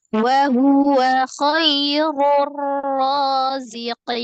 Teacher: Kemudian bertemu dengan satu huruf di situ ada huruf nun yang disukunkan karena waqaf. Jadi ada mad ketemu dengan satu huruf yang disukunkan karena waqaf. Namanya menjadi mad arid disukun, panjangnya 2, 4 atau 6.